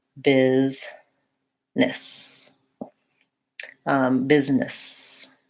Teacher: It also looks like it should be busyness because of the I there, but really it just sounds like this, business. So I'm saying the same vowel in both syllables, first syllable stress, and this S sounds as Z. These double S's say S, so it sounds like business. · It looks like it should be maybe a U sound or a different sound here, but that's actually the vowel I, same as in did and different, and in busy. And business has first syllable stress.